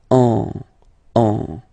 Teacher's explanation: you don't hear, sorry, any N in my pronunciation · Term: nasal